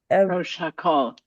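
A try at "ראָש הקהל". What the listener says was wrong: No, not Rosh. Rosh. Rosh Hakol. There's no O sound in Yiddish.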